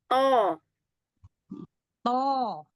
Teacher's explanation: Sifatnya huruf th ini jahr syiddah itbaq.